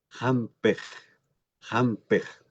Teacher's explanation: Miren cómo automáticamente esta I se abre un poco que se parece a la E del castellano.